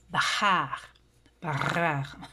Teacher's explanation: C'est comme une lettre gutturale. En tout cas, ça vient de la gorge. Nous, ici, notre langue, on n'a pas ça.